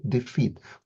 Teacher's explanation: So, for example, the word defeat, we don't stress the d, we stress the feet, defeat. We stress the second part, and that's the natural rhythm of the English language.